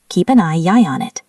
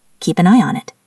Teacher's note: I ends in a vowel sound. On starts with a vowel. That's a Y bridge.